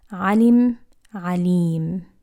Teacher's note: If I stretch that kasra vowel on the lam, it turns into alim